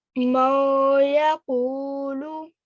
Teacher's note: You've got partial merging because nun sakin is followed by a ya. · idgham with gunna, which is partial assimilation, partial merging, not complete merging